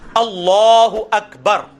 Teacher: اس میں کاف جو ہے نا یہ وہ عام کاف ہے, یہ قینچی والی کاف نہیں بلکہ کش والی ہے. اس کو باریک پڑھنا ہے